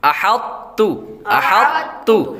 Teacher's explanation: جب بغیر ہجے کے پڑھیں گے، روانگی کے ساتھ پڑھیں گے تو طا کا ہلکا سا ساؤنڈ آئے گا، مطلب اس کی آواز آئے گی، لیکن پڑھیں گے تا کو ہی۔ احط، احط ہلکا سا موٹا کر کے آگے پھر بریک کر دیں گے۔